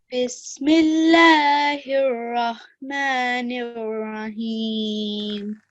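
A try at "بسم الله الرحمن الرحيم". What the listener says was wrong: Okay, so do you see this ha and this ha, this ha are both different to this ha of Allah? Yeah, so that means they are pronounced differently. Okay, so these two, this one, Ar-Rahman and Ar-Rahim, they have to be made with a thicker sound.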